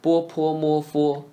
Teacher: The first group of consonants are labial consonants produced at the lips.